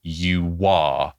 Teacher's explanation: she's using that W in between you are, which again is indicates her familiarity with stringing words together and not pronouncing them separately.